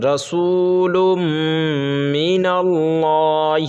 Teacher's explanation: لفظ اللہ سے پہلے نون کے اوپر زبر ہے تو یہ پر کر کے پڑھیں گے